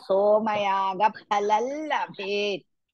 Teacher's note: Labhet, Bhe is Mahaprana, Pha is Mahaprana.